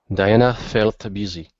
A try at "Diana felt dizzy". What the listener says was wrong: Okay, not busy, dizzy. Diana felt dizzy.